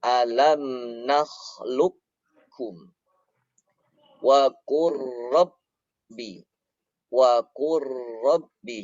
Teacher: Jadi lamnya sudah tidak berbunyi lagi. Qafnya pun sudah tidak berbunyi lagi.